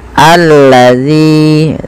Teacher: Ini bukan dibaca ulazi, ya teman-teman, tapi kita bacanya ketika ada hamzah atau alif di awal bacaan dan tanda seperti ini, kita baca dengan a, ya. Allazi, panjangkan zi 2 harokat karena mad tabi'i